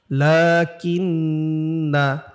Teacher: লামের উপর খাড়া জবর হইলে এক আলিফ টান দিতে হয়, মদের হরকত বলে এটাকে। লাকিন্না, কিন্নাতে কিন্তু টান নাই।